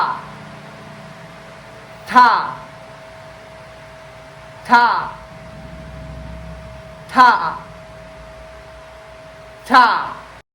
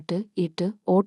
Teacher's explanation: നാവിന്റെ അറ്റം മുകളിലെ മുമ്പത്തെ പല്ലുകൾക്ക് ജസ്റ്റ് പിന്നിലെ ചെറിയ തട്ടിൽ ആൽവയോളർ ഫ്രിഡ്ജ് സ്പർശിക്കണം.